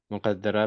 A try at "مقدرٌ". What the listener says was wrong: مقدرون، مقدرون، پہلے پیش لگایا کریں، سب سے پہلے پیش لگایا کریں. زبر زیر آنے کی کوئی وجہ ہوتی ہے.